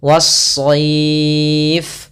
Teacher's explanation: lam diasimilasi ke dalam huruf berikutnya sehingga lam menghilang, jadi kita membaca shad secara langsung dengan tashdid · Awalnya al-sayf, tapi karena dia tidak bertemu dengan huruf shad, maka lamnya diidghamkan ke huruf setelahnya sehingga lamnya hilang. Sehingga kita langsung membaca shadnya tasydid.